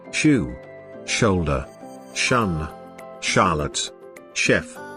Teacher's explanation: The sh sound is a voiceless palato-alveolar fricative sound. It is voiceless because there is no vibration of the vocal cords in the course of its articulation.